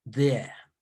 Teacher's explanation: It almost sounds like dear, but with dear, we place the tone at the front of the, behind the front teeth, but closest to the palate, but the upper palate. But here, when it comes to there, the tongue is coming rather closer to being in between the upper and the lower teeth